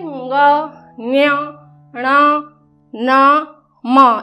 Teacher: तो ये ध्वनियाँ होते हैं जिनके उच्चारण के समय हम क्या करते हैं, हमारे मतलब फेफड़ों से जो हवा निकलती है वो नासिका विवर से होकर निकलती है। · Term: नासिक्य व्यंजन